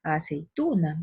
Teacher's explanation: vemos que en tu se halla el acento